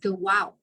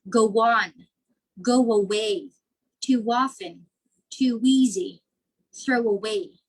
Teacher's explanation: it's as if there's a w that appears in the middle of two words that's why it's called intrusion okay go on go away too